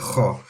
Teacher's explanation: kha comes from the top part of the throat. So like when you need to clear something or something stuck in your throat, you're like trying to get it out.